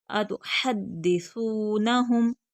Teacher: था बगैर सिटी के खींच कर पढ़ेंगे, आगे वाव मद्दा है